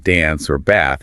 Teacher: The a sound in words like dance or bath is usually the flat a like in the word cat.